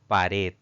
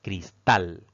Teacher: dividimos esta palabra en sílabas notaremos que tiene dos sílabas pero la mayor fuerza de voz al pronunciar esta palabra recae en la última sílaba contando de derecha a izquierda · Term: palabra aguda